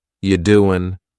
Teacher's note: The word you is reduced to ya.